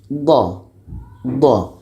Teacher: Kita rasakan ketika sebut huruf D itu akan terasa tepi lidah kanan atau kiri atau dua-duanya dia akan bertemu dengan dinding-dinding atau gigi geraham atas. Jadi ketika kita sebut huruf d ini akan ada tekanan huruf yang keluar yang akhirnya lidah kita akan memanjang. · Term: istitalah